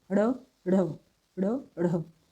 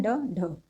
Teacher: इनको हम थोड़ा सा एक तरह से संघर्ष के साथ बोलते हैं, मतलब एक तरह से वो कह सकते हैं झटके से बोलते हैं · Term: उच्चिप्त व्यंजन